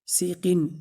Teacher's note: سین میں سیٹی کی آواز آنی چاہیے اور اس کو لمبا بھی نہیں کرنا ہے